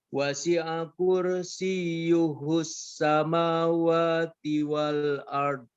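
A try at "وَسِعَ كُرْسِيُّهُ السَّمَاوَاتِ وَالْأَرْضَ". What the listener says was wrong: Ro-nya tebalkan kursi. Wasi'a kursiyuhu.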